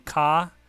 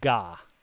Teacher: it goes from being the voiceless sound to the voiced sound so from ka to ga and that's for that whole line